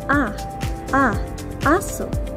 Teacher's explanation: A ay mababa at ang bahagi ng dila ay pasentral